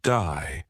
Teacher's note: Australian accent, they may say words like day more like die, giving words a slight twist.